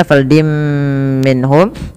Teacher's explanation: tanwinnya dimasukkan ke huruf mim dan ditahan